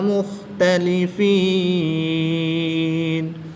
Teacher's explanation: یا مدہ کے بعد نون کی زبر کو وقف کی حالت میں ساکن کریں گے، تو یہاں پر وقف کی حالت میں مد عارض ہوگی، 2 سے 3 الف تک کھینچ کر پڑھیں گے۔